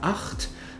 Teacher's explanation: es gibt das dunkle CH im Ach-Laut, wie in der Zahl 8, wo du mehr Friktion hinten im Hals hast